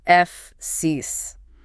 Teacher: The ending is the critical anchor point. The documentation explicitly states it must not end in a buzzy Z sound.